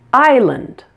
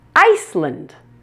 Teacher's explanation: in Island the S is silent notice the pronunciation Island the S sound in Iceland is not silent it's completely pronounced